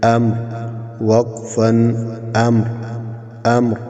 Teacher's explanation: وقف میں جب ہم وقف کریں گے تو را ساکن ہوگا، اس سے پہلے والا حرف بھی ساکن ہے، اس سے پہلے زبر ہے تو را کو ہم موٹا پڑھیں گے۔